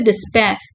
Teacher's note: இது டிஸ்பேர். டெஸ்பேர்னு ரெண்டே ஒரே மாதிரி அழுத்தம் கொடுத்து சொல்லக்கூடாது. டெஸ் வந்து கீழே போயிடணும், பேர் வந்து மேல ஸ்டோன் ஹையரா இருக்கணும்.